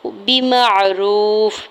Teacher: मीम की ज़बर को आइन साकिन के साथ मिलाते हुए पढ़ना है। वाव साकिन से पहले रा के ऊपर पेश है, वाव मद्दा हो रहा है, दो हरकत खींच के अदा करेंगे। फ़ा के नीचे दो ज़ेर की तनवीन है, वक्फ की सूरत में फ़ा को साकिन पढ़ेंगे।